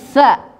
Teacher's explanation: kalau dia berharakat fathah ujung lidah sedikit terlihat jadi ada nafas mengalir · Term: huruf t